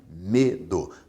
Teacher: A sílaba mais forte é a penúltima. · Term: paroxítona